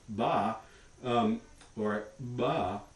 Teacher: So this little dark wavy line that you see in C, that means voicing. Voicing is going to continue acoustically throughout this entire vowel stop vowel sequence. That's a fully voiced stop.